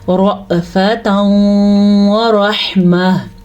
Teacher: ٹھیک ہے، ہا کے مخرج کا دھیان رکھنا ہے کیونکہ ہا سینے سے نکلتی ہے نہ کہ گلے کے درمیان سے یا شروع سے